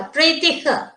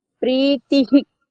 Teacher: ప్రీతిః అనాలండి అహి కాదు హః ప్రీతిహి హి కాదు హః అనాలి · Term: విసర్గం